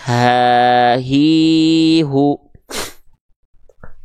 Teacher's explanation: A, i, u. Sedangkan ha besar, pita suaranya membuka. Sehingga keluar nafas